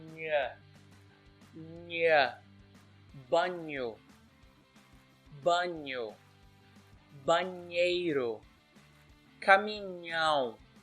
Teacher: All you have to do is press your tongue up against your palate and just say it nha. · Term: nha sound